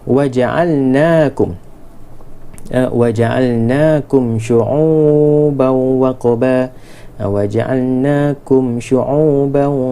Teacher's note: Waja'alnakum syu'uban, mim mati bertemu dengan shin, yang mana kena baca jelas. Izhar syafawi.